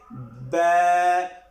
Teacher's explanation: یہ ہم دونوں ہونٹوں کو ملائیں گے اور اس کے اندر ہم پڑھیں گے با، اور اس کے آخر میں ہم جھٹکا بھی نہیں لگائیں گے، جیسے با آخر میں جھٹکا بھی نہیں لگائیں گے، اور اس کو ایک الف کی مقدار کے اندر ہم اس کو لمبا کریں گے۔